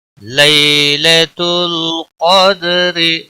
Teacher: یا لین ہے، تھوڑا نرمی کے ساتھ کھینچ کر پڑھیں گے